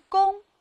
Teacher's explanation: 它也是一个后鼻音，韵母是后鼻韵母翁